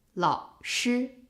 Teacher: 老师 is its actual pronunciation, but because 老 is followed by a first tone, it becomes a half third tone. 老师, not 老师.